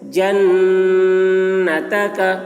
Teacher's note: نون میں غنہ ہوگا، یعنی نون کی آواز کو ناک میں لے جا کر گنگنائیں گے